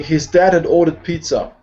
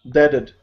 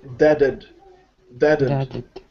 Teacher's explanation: The H is dropped. So all you hear is dadded. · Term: drop the H